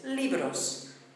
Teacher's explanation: the beat of the word falls on the last but one syllable the penultimate syllable